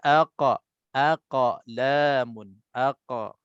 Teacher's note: ta ni ataupun huruf-huruf qalqalah ini dia akan cenderung ke baris atas saja